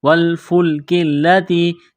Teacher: کاف کو باریک کرنا ہے، لام کے ساتھ پلس کریں گے، لام کو دبانا ہے تشدید کی وجہ سے۔ تا یا زیر تی، تا کو باریک کرنا ہے، یا ساکن سے پہلے زیر ہے، حروف مدہ یا ہے، ایک الف کے لمٹ میں کھینچنا ہے۔